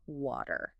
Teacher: our T's between vowels make them sound almost like D's but in British English that t keeps its crispness